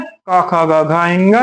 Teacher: जैसे हम का वर्ग का उच्चारण करते हैं, तो इसका एक सूत्र आता है, अकूह विसर्जनीय नाम कंठा, अर्थात इसका उच्चारण करने में हमारे कंठ का प्रयोग होता है